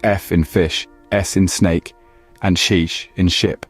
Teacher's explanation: Next, we have the fricatives, such as F in fish, S in snake, and sheesh in ship. These sounds are made by forcing air through a narrow channel made by placing 2 articulators close together.